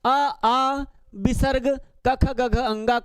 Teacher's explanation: अ आ विसर्ग कख गघ अंगा का उच्चारण स्थान कंठ होता है